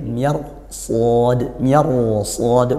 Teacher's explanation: karena ketemu huruf sad, roknya ditebalkan